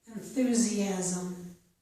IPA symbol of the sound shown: z